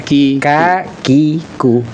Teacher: untuk kaf itu menyentuh langit-langit keras.